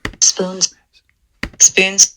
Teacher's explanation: the vowels are a little bit nasalized there i'll talk about that in the future too because there's an n afterwards